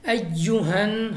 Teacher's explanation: نون مشدد میں ہم نے پڑھ رکھا ہے کہ غنہ ہوتا ہے، ہم نے غنہ کے ساتھ پڑھنا ہے، اور غنہ کی مقدار 2 الف کے برابر ہے، یعنی 2 سیکنڈ تک آپ نے کھینچنا ہے